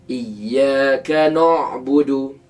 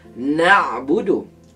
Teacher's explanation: Bacaan begitu sebenarnya kurang tepat kerana huruf nun merupakan huruf istifal yang sepatutnya nipis bunyinya. Maka bunyi yang sepatutnya ialah na'budu bukannya nuudu.